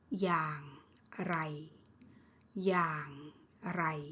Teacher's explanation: อย่าง low tone ไร mid tone อย่างไร how.